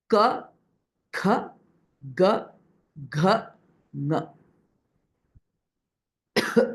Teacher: So here, if you see, all the sounds are produced from a certain upper palate region, right? And there is Alpa Prana, ka, and Mahaprana, kha, that is pronounced.